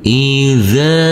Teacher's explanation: huruf dzal yang berfathah a bertemu dengan huruf alif yang tidak berharakat maka huruf kita baca dengan panjang dua harakat